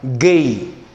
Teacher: The sixth of the plosive sound is the voiced velar plosive. The voiced velar plosive.